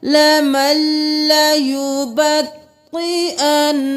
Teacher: तशदीद है, अन और फिर ना, दो बार अदा करना है